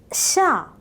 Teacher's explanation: The sides of the tongue make firm contact with the teeth and gum, preventing the lateral escape of the air. The air is passing through in between the teeth with a hissing sound.